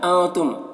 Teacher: نون کی آواز کو ناک میں چھپا کر پڑھیں گے۔ تم کے میم میں اظہار اخفاء شفوی ہوگا، غنہ اور اخفاء کے ساتھ میں پڑھیں گے۔